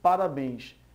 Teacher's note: Se nós fizermos a cantada da palavra parabéns, podemos perceber que ela é uma palavra oxítona